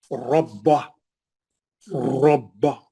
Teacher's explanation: मिसाल ये है, रब्बा, रब्बा, रा रा रा मोटा पढ़ना, गोल मुंह से भारी पढ़ना। रा पे जबर है, रब्बा। · रा पे जबर है, रब्बा। बा पे भी सख्ती है क्योंकि तजदीद है, 2 बा है, एक साकिन एक बा पे जबर है।